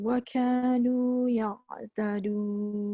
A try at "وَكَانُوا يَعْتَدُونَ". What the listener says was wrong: Tak dengung tu. Waw dengan waw tak dengung. Waka tu dia masuk je waw pertama kepada waw kedua tapi tanpa dengung.